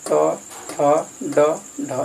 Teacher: ट, ठ, ड, ढ, इसका उच्चारण स्थान मूर्धा है